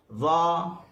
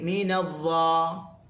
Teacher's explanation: masa nak sebut tu dia kena hujung lidah berada di hujung gigi atas. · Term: huruf dha